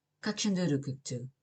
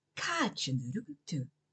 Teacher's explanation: Pay attention to the long vowel in Káiceann. Make it a clear ah sound at the back of your mouth rather than the front of your mouth.